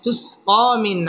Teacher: জবর ক এক আলিফ টেনে পড়তে হবে মধ্যে তবাই তুসকা মিন নুন সাকিনের বামে আইন আসছে আইন ইজহারের হরফ অতএব এখানে গুন্নাহ ছাড়া স্পষ্ট করে পড়তে হবে তুসকা মিন আই জবরের বাম পাশে জজম ওয়ালা ইয়া লিনের হরফ